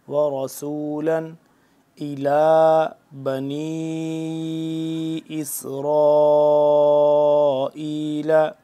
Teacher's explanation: اس کی وجہ یہ ہے کہ اس کے بعد حمزہ ہے، حمزہ یعنی کہ حروف حلقی میں سے آتا ہے، تو جب حروف حلقی کوئی آ جائے تو وہاں پہ غنہ یا اخفا نہیں ہوتا